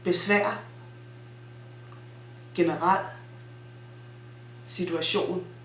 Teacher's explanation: multi-syllable nouns and adjectives with accent on the last syllable have a glottal stop